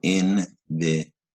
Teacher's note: invitation, again, a 4-syllable word, stress the te syllable.